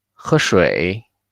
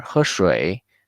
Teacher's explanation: This one, when tone 1 and tone 3 are together, since tone 3, the original sound is very low, but now tone 3 is the last pinyin with tone mark. We have no choice but to make the tone 3 a little bit higher pitch than its original sound, because the end of tone 1 is a little bit high, and then naturally we start with the tone 3, but not too high.